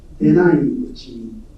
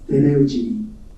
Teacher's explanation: The shift from the two vowels to a single high vowel and the transformation of a voiceless consonant into a voiced consonant can be seen when denai-uchi becomes deneuchi.